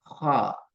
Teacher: மேல் நோக்கியதாக உச்சரிக்கணும். நாவினுடைய இறுதி பகுதி மட்டும் மேலுக்கு தூக்கப்படும். ஹா. நாவினுடைய இறுதி பகுதி தொண்டையோட சேர்ந்தாலே அந்த காரல் சரியாக வரும்.